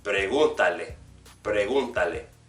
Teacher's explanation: the third syllable, the third vowel from the end, will be the one that's accented to keep it uniform with the regular pronunciation of the word pregunta, pregúntale.